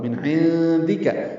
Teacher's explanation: عین وسط حلق سے ادا ہوگا